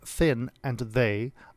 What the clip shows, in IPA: θ and ð